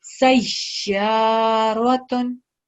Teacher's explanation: Just make sure you press down on the ya sound because it has a shadda.